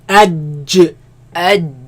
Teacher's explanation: They come from the middle of the tongue against the middle of the upper palate.